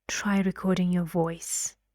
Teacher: my voice going down